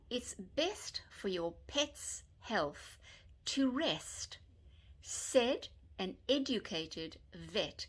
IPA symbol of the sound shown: e